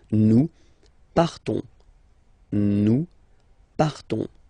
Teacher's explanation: you don't pronounce the S, you just have this on sound nasal